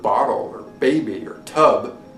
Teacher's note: it would tag it as voiced and bilabial and as a stop